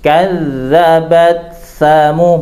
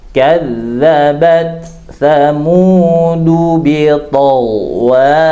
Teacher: huruf ta dengan huruf tha itu bukan huruf yang sejenis, ya. Ini beda makhraj, beda makhraj.